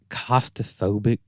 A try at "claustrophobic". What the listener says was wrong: has an L in it. Claustrophobic.